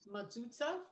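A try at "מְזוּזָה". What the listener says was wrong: I don't want you to use the Shiva at the beginning is almost like an apostrophe. Don't make it an ah, make it like a short I almost. So it's mezuzah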